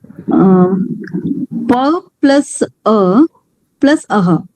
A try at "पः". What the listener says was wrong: Plus A, don't say Aha. Pa plus A and Visarga.